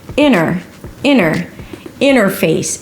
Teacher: The beginning is the word 'inter' like 'internet' or 'international'. Now, when the T appears after an N it is often dropped